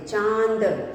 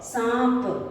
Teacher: इन शब्दों का उच्चारण करते समय हम ध्वनि हमारे नाक से आती है, इसलिए हम इन्हें अनुनासिक कहते हैं।